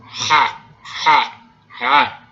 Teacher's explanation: Essa variedade sem nada é o som ha, ha. É uma fricativa faringal. É pronunciado lá onde o seu músculo produz o vômito.